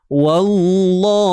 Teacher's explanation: Jangan bawa pengaruh tebal pada huruf waw.